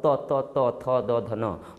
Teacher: त थ द ध न, तो ये दांत से निकल रहा है, दांत को टच कर रहा है, तो हम कहेंगे तवर्ग।